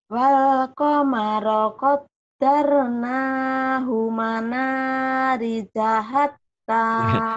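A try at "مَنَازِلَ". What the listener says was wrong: Ini bukan manari, manazila zai.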